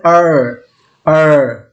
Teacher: ওকে, তো এই সাউন্ড উচ্চারণের সময় দেখতে পাচ্ছি যে জিহ্বার আগা গিয়ে আমাদের একটু দাঁতের গোড়ার একটু পিছনের দিকে গিয়ে উল্টে গেছে, এখান থেকে আর উচ্চারিত হচ্ছে। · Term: আর সাউন্ড